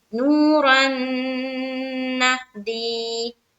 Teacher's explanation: ہا کے اوپر جزم ہے، جزم ایک علامت ہے، جزم والے حرف کو پیچھے والے حرف سے ملا کر پڑھتے ہیں، جیسے نہ دی، یا ساکن سے پہلے زیر ہے یا مدہ ہوگی، یا مدہ کو ایک الف کی مقدار کے باقدر کھینچ کر پڑھیں گے